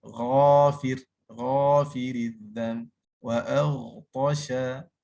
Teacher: Dan jaga juga sebutan seperti ghafir, ghafiridzam, wa aghtasha, wa bila kita sebut huruf ghin tu, sama ada dia berbaris ke, dia mati ke, mesti ada ghargharah ni. Yang kena ingatlah ni, ghargharah ni adalah sebutan seperti kita nak mengeluarkan qahar.